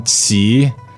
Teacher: actually neutral in this phrase and then Qi what's the tone third tone means go down and up